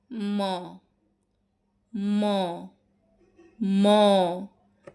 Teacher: এখন আমরা দেখব নাশিক্ক ব্যঞ্জন। যেসব ব্যঞ্জন ধ্বনি উচ্চারণের সময় ফুসফুস থেকে আসা বাতাস মুখের মধ্যে প্রথমে বাধা পায় এবং নাক এবং মুখ দিয়ে বেরিয়ে যায় সেগুলোকে বলা হচ্ছে নাসিক্য ব্যঞ্জন